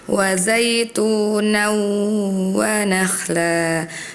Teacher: Tadi untuk idgham bi gunnah ada beberapa yang terlalu cepat membacanya ya, jadi belum ditahan. Harusnya ditahan dulu 2 harokat disertai dengan dengung ya.